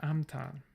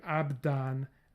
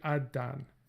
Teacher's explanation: we have denasalization in B to abtan, and then voicing assimilation to abdan, and then place assimilation to addan